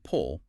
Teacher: For a short sound, like in pull, your lips are just gently rounded.